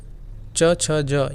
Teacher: जितना भी च वर्ग है आपका तालव्य व्यंजन कहलाता है